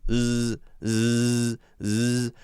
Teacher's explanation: Zzz, zzz. Now, the sides of the tongue are pushed up completely against the roof of your mouth, but the front of your tongue is the part that's vibrating right behind your teeth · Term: Z sound